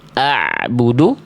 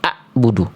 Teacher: Kalau ain dari tengah tenggorokan, kalau hamzah dari pangkal-tenggorokan.